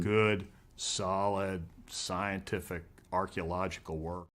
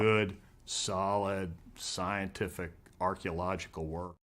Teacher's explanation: there is a lot a lot a lot of stress for each of these words and there's also some pauses between them